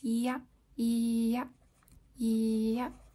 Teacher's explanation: it's an approximate which means that it's almost touching but not quite there's some space between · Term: Y sound